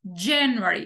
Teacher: del año se acentúan de manera diferente en inglés Por ejemplo en inglés enero tiene la sílaba tónica en la primera